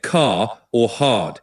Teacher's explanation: where the R comes before a consonant or at the end of a word, it's usually silent. So you get car or hard. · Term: nonroticity, non-rhoticity